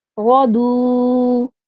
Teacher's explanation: یہاں پہ حروف مدہ آ گیا ہے، تو اس کا وقف کیا ہوگا؟ لمبا کر کے ہم اس کا وقف کریں گے